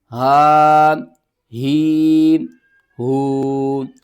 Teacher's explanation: حمزہ اور ہا ان دونوں کا مخرج ایک جیسا ہے، سیم ہے، یعنی کہ یہ دونوں ہی حلق کے سب سے نیچے والے حصے سے ادا ہوتے ہیں